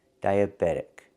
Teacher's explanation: And we hear that T changing to a fast D.